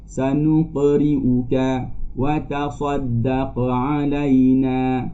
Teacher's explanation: bunyi lantunan yang rendah ketika menyebut huruf qalqalah yang berbaris sukun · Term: qalqalah sughra